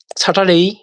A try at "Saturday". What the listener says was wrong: না স্যাটারডে, বলেন, সাথে সাথে বলেন স্যাটারডে, নট আর হবে না স্যার, বলেন স্যাটারডে